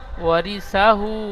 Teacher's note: হার উপরে উল্টো পেশ এসেছে, উল্টো পেশ ঔ মাদ্দার সমতুল্য, সুতরাং উল্টো পেশকে ঔ মাদ্দার মতো এক আলিফ পরিমাণ টান দিয়ে পড়তে হয়